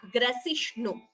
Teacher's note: Both the bhas are Mahaprana and this is sa, not sha.